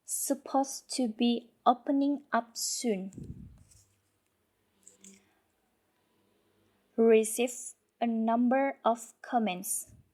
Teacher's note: the ed sound is omitted, but we have to notice there is a push when we pronounce the word of past tense.